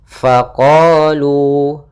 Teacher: fathah bertemu Alif maka panjangnya dua harakat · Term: Mad thi'i